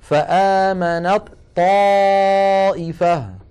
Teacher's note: وهي من مخرج الطاء، فإذا وصلنا كلمة آمنت مع كلمة طائفة نحول التاء إلى طاء ثم ندغم الطاء الأولى في الثانية ويصير النطق هكذا، فآمنت طائفة، فآمنت طاء ولا يبقى للتاء أثر.